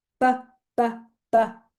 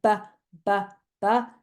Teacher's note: posive sound the difference is bbbb I'm using my voice and if you want to put your hand on your larynx and say BBB you will feel your voice box vibrating if you say the same sound but turn your voice off